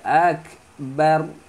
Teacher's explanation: berhenti pada huruf ra. Muncungkan mulut.